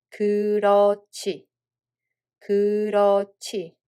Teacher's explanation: There is a hieut batchim and it makes the following [ㅈ] sound aspirated [ㅊ]